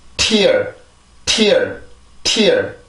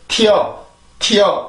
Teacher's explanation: 절대로 tear, tear 이렇게 발음을 하면 안 되고 반드시 그 소리가 나오고 나서 T의 순수한 소리, 즉 강한 T 소리가 나오고 나서 그 다음에 I라고 하는 그 모음을 만들어주는데 성대가 강하게 긴장이 되죠.